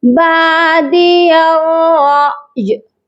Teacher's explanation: بادی یا را زبر یر، یا کو ڈائریکٹ را کے ساتھ ملائیں گے سختی کے ساتھ، درمیان میں الف اور لام خالی حروف ہیں، ان کو نہیں پڑھا جائے گا۔ اس کے بعد ہے را حمزہ زبر را، یہاں پر ہم جھٹکا دیں گے کیونکہ یہ الف نہیں ہے بلکہ حمزہ ہے اور وہ بھی ساکن والا۔